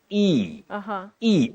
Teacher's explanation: words do not have what you see as the sound like letter E in this word takes the long what we call the long high front sound